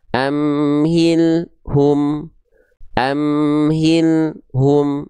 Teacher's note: lam sukunnya itu dibaca dengan keadaan terputus